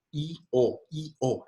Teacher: La consonante, la vocal de la mitad es la más sonante de las posibles vocales. Entonces, I es una vocal cerrada, I. Entonces es menos sonante que O.